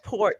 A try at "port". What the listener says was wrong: No, port with the T. with the T. Port. Port.